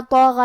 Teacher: غین کی ادائیگی حلق کے اوپر والے حصے سے ہے، ہمیں حرف الطو کو اور غین کو دونوں کو بھاری آواز میں پڑھنا ہے۔